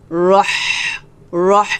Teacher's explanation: তো এখানে আমরা হামস করব, অর্থাৎ বাতাস বের করব চিকন করে। রহ, রহ এভাবে বাতাসটা বের হবে।